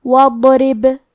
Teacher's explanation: آخری میں با پہ جزم ہے، ہمیں حرف البا کو قلقلہ سے پڑھنا ہے اور قلقلہ کا معنی ہے حرف ساکن کو ہلانا، تو ہم با کو ہلاتے ہوئے یہ کلمہ کو پڑھیں گے.